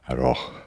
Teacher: breathe on your glasses at the end of aroh